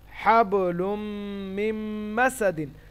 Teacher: নুনটা এখানে বাদ দিয়ে সরাসরি মিমের সঙ্গে মিলছে, নুন সাকিনের পরে মিম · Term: বাগুন্না